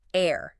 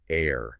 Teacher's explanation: the challenge is the initial consonant, the H. That just vanishes. It's completely silent, making the word sound identical to heir. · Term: H-dropping